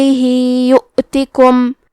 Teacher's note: کلمت یؤتکم میں واو پہ حمزہ ہے اور اس پہ جزم ہے تو ہم حمزہ کو ظاہر کریں گے. تا کے نیچے زیر ہے تو ہم حرف تا کو صرف زیر سے پڑھیں گے.